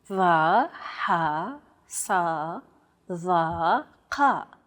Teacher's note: They sound like the D, H, S, T, and Q sounds respectively, except much more tense because the throat is constricted. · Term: emphatic consonants